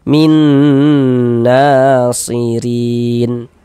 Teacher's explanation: Maka cara membacanya kita idghamkan kemudian kita ghunahkan. Jadi di bagian minnya itu suaranya itu kita tahan. Kita panjangkan sejenak sepanjang dua harakat. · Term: idgham bighunah, idgham bi gunnah